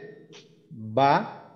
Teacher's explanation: ঠোঁটের ভেজা অংশ থেকে বা